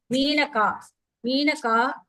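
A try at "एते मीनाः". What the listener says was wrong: Why are you saying ka? Why are you saying ka anga? Where is ka? In the padathala, where is ka? So it is ete. That's all. Ete, meenaha.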